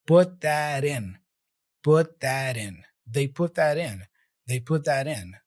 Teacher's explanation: the final T there of that is the flap T. · So the T for put is dropped. And then he just pronounced the just pronounces the T for that.